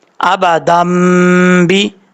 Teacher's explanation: حمزہ زبر آ، با زبر با، آبا، دال میم دو زبر دم، با زیر بی، آبا دم بی. یہاں پہ ایک الف کی مقدار غنہ کر کے پڑھنا ہے آپ نے کیونکہ یہاں پہ چھوٹا میم آ رہا ہے